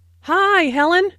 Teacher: notice that the I sound in high is extended